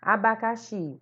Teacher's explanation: O xi é a sílaba tônica.